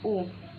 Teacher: vokal tinggi belakang diucapkan dengan kedua bibir agak maju dan sedikit membundar